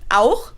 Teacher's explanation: So in some words like auch, which means also, or Dach, which means roof, you pronounce it more in the back of your throat. Almost as if you had a piece of food stuck in there and you're trying to get it out. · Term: harsher version of the CH sound